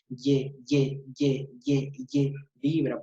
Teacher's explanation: es sonora porque porque vibra aquí en mis cuerdas vocales